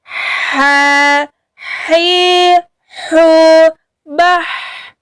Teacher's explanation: Ha ini berada di tengah tenggorokan, sifatnya yaitu rokhawah, suara kita mengalir. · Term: huruf ha